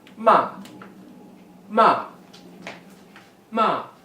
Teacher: Descending tone, fourth tone, ma, ma, ma, means to scold.